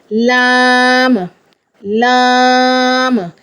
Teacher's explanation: ज़बान का किनारा और ऊपर वाले दांतों के मसूड़े इस्तेमाल होंगे लाम अदा करने में